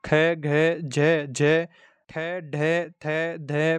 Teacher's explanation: जिन ध्वनियों के उच्चारण में श्वास वायु की मात्रा अधिक होती है उन्हें महाप्राण कहते हैं